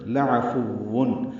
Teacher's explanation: میں یہ بھی لام لمبا نہیں کرنا، لعفون نہیں پڑھنا، لعفون، عین وسط حلق سے ادا کریں گے ، فا کو واو سے ملائیں گے، تنوین کے بعد غین